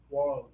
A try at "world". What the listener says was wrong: Ah, you're going a little fast. Slow it down.